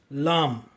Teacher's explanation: லாமை உச்சரிப்பதற்காக உங்கள் நாவின் நுனியை மேல் முற்பற்களின் பின்னே உள்ள ஈரின் மீது வைத்து உச்சரியுங்கள்.